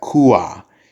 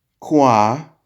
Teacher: once you say that fast enough, kua becomes kwa.